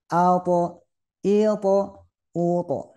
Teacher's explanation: mau vokal apa saja tetap bunyinya tebal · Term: huruf tho